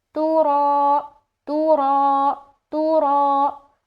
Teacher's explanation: ये रा तो पुर पढ़ा जाएगा, तो उसके साथ साथ अलिफ भी मोटा हो जाएगा, पुर हो जाएगा · तूरा, तो क्या गलती हुई कि रा को कायदे के मुताबिक मोटा करना था, जो कि उन्होंने यहाँ पर बारीक पढ़ा